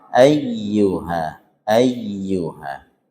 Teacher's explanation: Kita panjangkan sampai empat saja nggih. Empat atau lima sebenarnya kita ambil empat ya sampai empat. Kemudian kita naik sedikit suaranya.